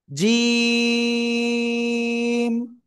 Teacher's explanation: এই যে জিহ্বা, জিহ্বার মাঝখান বা মধ্যখান, তারপর আবার উপরে তালুর সাথে লাগবে, লাগিয়ে 1 2 3 আলিফ টান হবে।